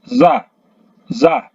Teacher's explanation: ujung lidah menyentuh gigi bagian bawah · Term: huruf Zai